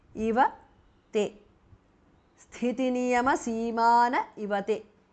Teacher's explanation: The visarga is dropped because of sandhi.